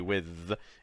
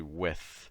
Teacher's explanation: with is actually a voiceless th so it's not voice